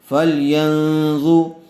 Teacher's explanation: نون ساکن کے بعد ضا آیا ہوا ہے، اس لیے غنّے کے ساتھ اخفا کر کے پڑھیں گے۔